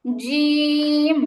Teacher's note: >> আপনার জিমটা মাঝখান উপর তালুতে লাগে নাই জিবার আগা লাগছে জিহবার মাঝখান মাঝখানটা উপরের তালুতে লাগবে